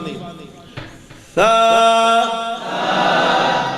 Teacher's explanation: تو یہ لگا کر یک وقت زبان لگا کر پھر ادا کرنا ہے، تا، تا، سا کو پڑھتے وقت یہ آواز پیدا نہ ہو، یہ سیٹی کی آواز ہے، اور سا میں سیٹی کی آواز نہیں